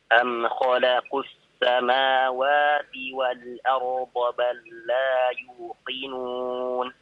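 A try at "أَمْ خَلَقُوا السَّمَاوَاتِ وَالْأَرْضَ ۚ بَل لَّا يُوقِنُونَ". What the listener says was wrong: Iya, baik. Barakallahu fiik ya.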